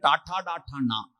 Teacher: അണ്ണാക്കിൽ നാവ് പറ്റിച്ചിട്ട് വ്യഞ്ജിപ്പിക്കുന്ന ചാച്ചാ ചാച്ചാഞ്ഞ താലം എന്നാണ് അണ്ണാക്കിന് പറയാ, താലവ്യം. നാവിന്റെ മൂർധാവ് അണ്ണാക്ക് കുത്തി പറയുന്ന അക്ഷരങ്ങൾ മൂർധന്യം